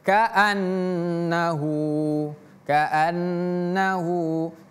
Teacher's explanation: Kaannahu hu-nya di sini panjang